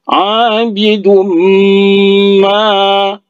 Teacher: Nah, ini huruf mim karena dia huruf sebelumnya itu berbaris tanwin bertemu dengan mim, maka idgham bi gunnah dimasukkan dan langsung didengungkan. Abidum ma, ya, ma-nya 2 harkat mad asli atau mad tabi alif.